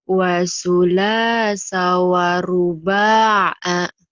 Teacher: Sa-nya pendek. Yang panjang la-nya doang.